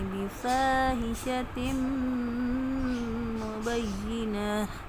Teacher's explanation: میم مشدد کا غنہ کرنا ہے، دو زیر کی جو تنوین ہے اس کو میم کے ساتھ ملائیں گے تو ایسے پڑھیں گے، بفاحشۃ مبینہ، جب وقف کریں گے تو